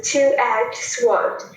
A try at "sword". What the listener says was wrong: Sword, sword, sword. W, bỏ chữ W đi. Sword. Đúng rồi.